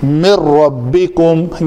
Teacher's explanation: تو اس کو پڑھنے میں مِن ربکم یعنی نون بالکل بھی نہیں پڑھی جائے گی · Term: ادغام تام